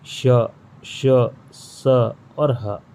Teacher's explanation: घर्षण से उत्पन्न होता है, गर्म वायु उत्पन्न होती है इसके बोलने से। जैसे कि श, श, स और ह, ये 4 संख्या इनकी भी होती है ऊष्म व्यंजन की।